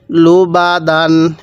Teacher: আমি কিন্তু প্রত্যেকটি শব্দের শেষে দন্তান্য উচ্চারণ করতেছি কারণ এই তানবিনের এই দুই জবরের উচ্চারণ বাংলায় দন্তান্য উচ্চারণ হয়